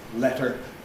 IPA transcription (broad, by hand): ˈletɚ